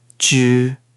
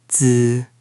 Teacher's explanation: The first is darker and rounder. The second is brighter and flatter.